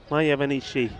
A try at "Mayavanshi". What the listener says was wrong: It's Mayavanshi. You said Mayavanishi. It is.